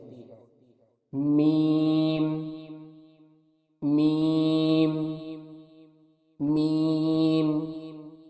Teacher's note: میم کے مخرج کی ادائیگی دونوں ہونٹوں کے خشک حصے سے ہوتی ہے